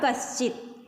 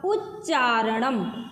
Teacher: जो दंत वर्ण है वो तालव्य वर्ण में बदल जाता है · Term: इष्टुत्व संधि